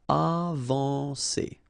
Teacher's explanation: when you combine A and N, you get the nasal en